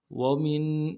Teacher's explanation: ومن دونهما جنتان، ومن، واو کو نون سے ادا کرنا ہے، میم کو نون ساکن کے ساتھ ملانا ہے، نون ساکن میں غنہ کریں گے